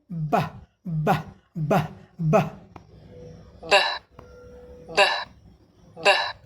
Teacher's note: दोनों होठ एक दूसरे से बंद करेंगे